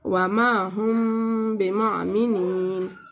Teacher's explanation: وما ہم بمعمنین، یعنی میم جو ہے اس میں سے جلدی سے گزر کے با کی حرف پر آ جائیں گے اور غنہ کے ساتھ یہاں پہ اخفاء کریں گے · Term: اخفاء شفائی